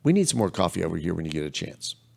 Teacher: It's falling tone. It's very directive.